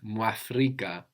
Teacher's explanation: the MU becomes MW